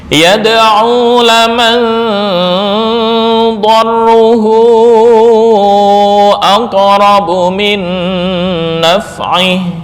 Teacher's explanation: samar dan dengung dibaca secara seimbang atau fifty-fifty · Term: ausat